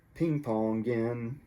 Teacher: G here would jump over and join with the N, make a new word